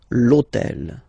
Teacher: in French we don't pronounce H, okay, so basically the first sound of the word is the vowel O